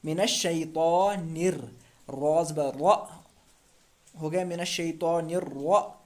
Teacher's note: रा के ऊपर तशदीद है इसलिए सख्ती करेंगे इसमें, और फिर से एक मरतबा रा को पिछले वाले हुरूफ से मिलाकर पढ़ना है